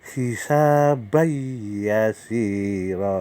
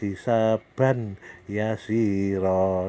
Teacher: Ya itu adalah huruf punyaan idgham ma'al huna atau idgham bihuna. Jadi harus dibaca memasukkan serta berdengung. Artinya memasukkan serta berdengung itu yaitu cara membacanya yaitu nun mati ketemu ya.